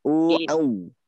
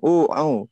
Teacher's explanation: Yang pertama ain itu tidak boleh ke hidung